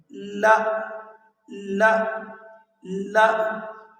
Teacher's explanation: جب ہم پہلا حرف لا کو ادا کرتے ہیں تو زبان اوپر تالو کے قریب جا کر لگتی ہے